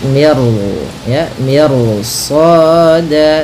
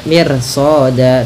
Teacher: Meskipun kaidah yang pertama ketika ada huruf ro sukun didahului kasroh itu tipis, tapi karena datang setelah huruf ro itu huruf isti'la, huruf yang tebal dan huruf yang pangkal lidahnya terangkat, dan dimana shad ini itu huruf isti'la, maka ro-nya menjadi tebal. Maka miru ya, miru soda, tidak mir soda, tidak dibaca, jangan dibaca kanat mir soda, tapi dia ro-nya tebal. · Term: ro tebal